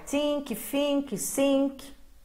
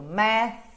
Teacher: As cordas vocais não estão trabalhando nesse TH, ó. Coloca a mão nas cordas vocais, estão descansando. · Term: voiceless